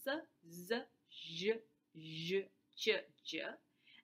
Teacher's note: this is called the natural class of sibilant or the hissing sounds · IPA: /s, z, ʃ, ʒ, tʃ, dʒ/